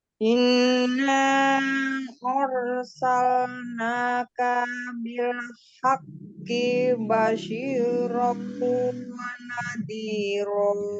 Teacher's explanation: roknya tafkhim ya. Dan inna ar ya, tebalkan dikit.